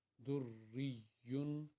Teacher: या के ऊपर भी शद है, या को भी दो दफ़ा पढ़ा जाता है।